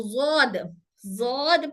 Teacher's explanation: India Pakistan, यहाँ पर हमारे यहाँ जौद बोला जाता है इसको